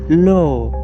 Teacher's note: जब आप ल बोलते हैं तो हवा जीभ के बगल से होकर निकलती है। जीभ थोड़ा मुड़ता [संगीत] है ल। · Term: साइड वाली हवा